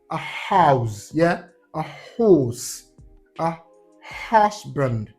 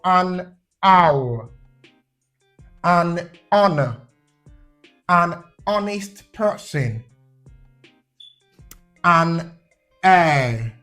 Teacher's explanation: Yeah, so all of these, the letter H in them are treated as silent. So we do not pronounce the letter H sound in these words.